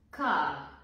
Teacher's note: р не се произнася в края на думата